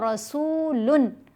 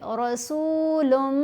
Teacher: جب ہم پڑھتے ہیں رسولن تو نون کی آواز سنائی دیتی ہے، اسی نون کی آواز کو ہم نے مرج کرنا ہے میم کے اندر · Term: ادغام